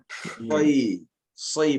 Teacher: Kalau Anda tahqiq nih, soi bukan sti, tapi soi. Itbaq tertahan sebelum dia keluar.